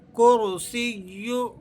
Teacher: کرسیہ، را کو آپ نے پر کر کے ادا کرنا ہے اور سین کو یا سے جماؤ کے ساتھ اور مضبوطی سے ملا کر پڑھنا ہے